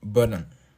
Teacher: Estos sonidos glotales, que son más bien una pausa, se producen en la glotis, que es el espacio entre las cuerdas vocales.